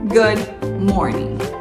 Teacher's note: o g último g de Morning também esquece é como se ele fosse mudo